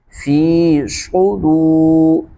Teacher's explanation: تو صاد کو واضح کر کے پڑھیں گے، صاد کو موٹا کریں گے، صاد حروف مستعلیہ میں سے ہے، صاد پیش سو، سو نہیں سو غلط، سو، دال واو پیش دو، واو مدہ ہے کھینچیں گے